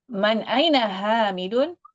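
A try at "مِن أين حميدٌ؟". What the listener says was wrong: man atau min?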